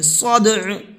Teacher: رجع، والارض ذات الصدع، والارض، ضاد کو منہ بھر کے پڑھیں گے، ذات، صاد کو منہ بھر کے پڑھیں گے